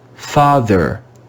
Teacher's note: in the word father we see the letter e before a letter r and it's read with the schwa sound